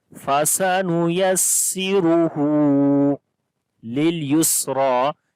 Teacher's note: on the ra we read heavy sound due to dhamma on it